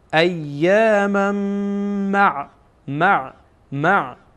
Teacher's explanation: بعد از این تنوین میم دیگه آمده و میم از حروف یرمولونه و ما گفتیم که اینجا ادغام میشه. وقتی که بعد از تنوین حرفی از حروف یرمولون بیایه ادغام میشه.